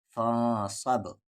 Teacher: با ساکن ہے یعنی قلقلہ ہوگا